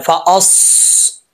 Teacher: स्वाद हरूफ मुस्तालिया में से है, इसको पुर पढ़ेंगे। हरूफ मुस्तालिया इनके ऊपर ज़बर हो, ज़ेर हो, नीचे पेश हो, कुछ भी हो, हर हालत में ये पुर पढ़े जाते हैं, तो इनको पुर पढ़ना है।